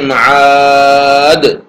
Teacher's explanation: حرف مد کے بعد سکون وقف کی وجہ سے ہو تو اس کو مد عارض وقفی کہتے ہیں